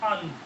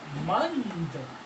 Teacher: तो दंत में सिंपल है कि जो अनुस्वार होगा, अगर इस त के कारण, ये त वर्ग है, तो इस त वर्ग के कारण, या दंत वर्ग है, दंत वर्ग के कारण जो अनुस्वार है उसका उच्चारण दंत का नासिक्य है, दंत का नासिक्य व्यंजन यानी न हो जाता है